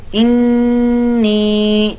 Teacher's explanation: नून मुशद्दद का पहले गुन्ना करेंगे, फिर इसको या मद्दा लंबा करेंगे, लेकिन या मद्दा के आगे हमजा भी आ रहा है, या ये मद जो है मद्दे मुफस्सिल है, 2-2.5 तक इसको लंबा कर सकते हैं, 4 अलिफ तक, 2-2.5 या 4 तक लंबा कर सकते हैं।